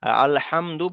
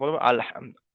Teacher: দুজের দু পেশ থাকলে সেখানে সাকিন করে পড়তে হবে তাহলে এখানে দালের উপর যে পেশটা এসছে পেশটাকে বাদ দিয়ে এখানে সাকিন করতে হবে